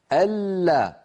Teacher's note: اللام الأولى من اللام المشددة بينية فلها زمن متوسط